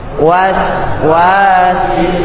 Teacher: Wa keduanya panjang 2 harokat.